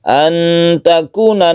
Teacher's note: Nun bertemu dengan tak kita sebut dengan Ikhfa Haqiqi karena Nun tersebut disamarkan cara membacanya dan dipanjangkan ketika kita membaca nun mati kita bersiap membaca tak itu artinya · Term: ikhfa hakiki